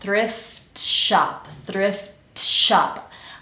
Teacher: and then let's connect that to shop thrift shop thrift shop I barely let go of that t Thrift and I'm already starting sh Shop